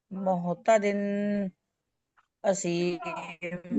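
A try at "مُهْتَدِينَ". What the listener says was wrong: मुअतदिन असीम, दिन लंबा गुन्ना नहीं करना क्योंकि आगे हमजा है ना, इजहार है, تو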